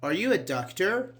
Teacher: Doctor, it's like actually rising intonation.